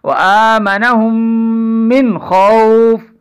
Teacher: اب نون پر غنہ نہیں ہوگا نون ساکن پر، اس لیے کہ حروف حلقی میں سے خا آ چکی ہے. حروف حلقی 6 ہیں، حمزہ ہا، عین ہا، غین خا. · میم ساکن کے بعد پھر میم مشدد آ گئی، ہم اس کو ملائیں گے دونوں کو تو یہاں پر غنہ واقع ہو جائے گا